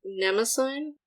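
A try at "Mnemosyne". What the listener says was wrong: Nemesine. You gotta pronounce the E at the end too.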